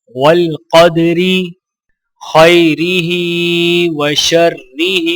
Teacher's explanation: ہا کے نیچے کھڑی زیر ہے تو لہٰذا دونوں ہا کو ایک الف کے برابر کھینچ کر پڑھیں گے